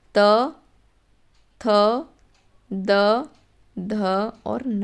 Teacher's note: थ बोलो, टकरा रही है, पूरे वर्ग में त वर्ग में टकराएगी। ठीक है, तो दंत से बोला जाता है त वर्ग